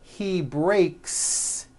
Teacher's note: the S you add also remains unvoiced